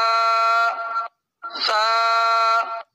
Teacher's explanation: اوپر کے دانت اور نیچے کے دونوں دانتوں کے درمیان زبان کی نوک آئے گی تو یہ حرف ادا ہوگا